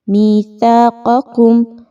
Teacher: وَإِذْ أَخَذْنَا مِيثَاقَكُمْ، مِيثَاقَكُمْ، سا کو بہت باریکی کے ساتھ نرمی کے ساتھ پڑھا جائے گا۔ یاد رکھیے سیٹی کی آواز اس میں نہیں لانی، بہت نرمی کے ساتھ پڑھے جانے والا حرف ہے